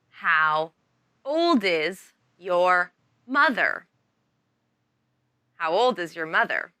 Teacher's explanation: when you speak faster remember to link the D sound of old to the beginning I sound of is